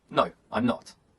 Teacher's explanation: in short answers the intonation Falls